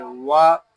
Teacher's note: वाव जबर वा, वाव पे होंठ गोल होंगे, वाव होंठों की लुआई से अदा होता है।